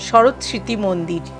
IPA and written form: ʃɔrot sriti mondir (Sarat Smriti Mandir)